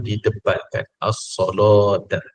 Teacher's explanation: Sebelum lam itu ada huruf Sad, maka lam tu ditebalkan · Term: lam yang tebal